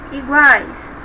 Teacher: temos uma sílaba em que tem 3 sons, um semitom, um tom e outro semitom, uma semivogal, uma vogal e outra semivogal. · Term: tritongo